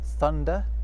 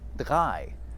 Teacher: where English developed a th sound in certain words, German went off in a slightly different direction and ended up with a d sound instead. So where English has 3, German has drei.